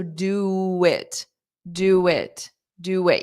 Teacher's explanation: You'll hear a W sound because we need a sound to glide between do and it. Otherwise, you have to take a pause.